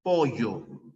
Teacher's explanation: en el Castellano costeño en el Castellano amazónico no se pronuncia la doble l si no se pronuncia la Y